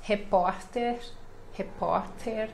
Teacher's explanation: este R intermediário, né, no meio da palavra, suave.